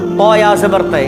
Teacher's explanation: طا یا زبر طے، اس سے پہلے بھی ہم پڑھ چکے ہیں۔ یا ساکن سے پہلے اگر زبر ہو تو یا لین ہوگی، یا لین کو نرم آواز کے ساتھ جلد ادا کریں گے